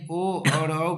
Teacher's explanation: ओ और औ का उच्चारण स्थान कंठ और ओष्ठ है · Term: कंठोष्ठम